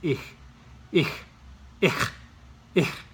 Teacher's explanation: It's not ch, it's not sh, it's not k. It's kind of like k, but it lingers. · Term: CH sound